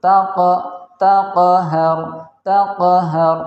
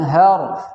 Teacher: ra-nya dibaca dengan bacaan yang tafkhim, tebal, karena sebelumnya ada huruf yang berbaris fathah yaitu huruf ha, maka dibaca dengan tafkhim.